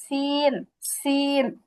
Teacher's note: জিহ্বার আগাটা যদি সামনের নিচের দুই দাঁতের আগার সঙ্গে লাগে তাহলে হবে সিন